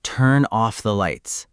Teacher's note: the N at the end of turn connects to the O of off.